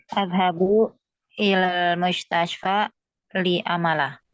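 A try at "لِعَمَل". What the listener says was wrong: Huruf ainnya coba. A'malah.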